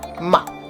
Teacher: then you have the neutral tone where it's almost not even pronounced ma this is a question particle it's like putting a question